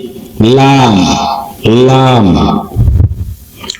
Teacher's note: জিহ্বার অগ্রভাগ বা মাথার কিনারা উপরের দাঁতের মাড়ির সাথে লাগিয়ে